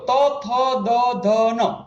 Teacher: જીભ છે એ દાંતને અડી રહી હશે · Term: દંત્ય